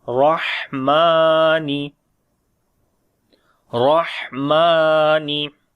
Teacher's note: Mim we long due to standing fatha.